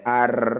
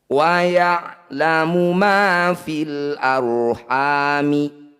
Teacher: Cara bacanya bunyi ro ini kurangi getarannya. Jadi tidak boleh ar. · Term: ro tafkhim